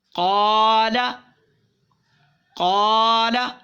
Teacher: اسے ایک الف یعنی 2 حرکات کے برابر ملا کر پڑھیں گے، کھینچ کر پڑھیں گے